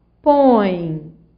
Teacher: Em põe, você vai da vogal O para a semivogal E. Você vai da mais forte para a mais fraca. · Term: ditongo decrescente